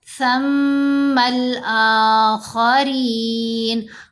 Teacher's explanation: خا کو موٹا پڑھنا ہے، را کے نیچے زیر ہے، را کو یہاں باریک پڑھیں گے